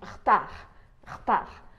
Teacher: Quando a gente fala a palavra retard, rapidamente esse E do meio acaba desaparecendo.